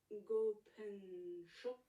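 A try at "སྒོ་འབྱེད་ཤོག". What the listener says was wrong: Alors, gopen, c'est plutôt ko, pang, cho. Il n'y a pas de pen. C'est ko et c'est un ko.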